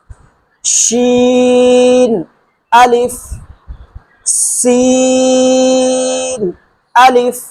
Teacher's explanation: شین سیٹی والا حروف، یہ بھی یاد رکھنا ہے، اس میں سیٹی کی آواز نکلنی چاہیے